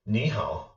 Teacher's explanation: when two third tones are together this first tone this first word becomes a second tone